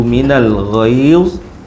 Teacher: ghaiz tu panjang dua boleh. empat boleh, enam pun boleh. Mad mad lin ya. Ya mati sebelumnya baris atas ketika waqaf.